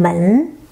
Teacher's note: M is initial, N is nasal final with the second tone, the rising tone